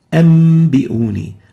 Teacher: Example, an biuni would be iqlabed or exchanged, the noon would be exchanged into meme